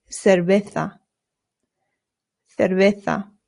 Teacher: Not cerveza. Your lips just touch very lightly when you make the V sound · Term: very light B sound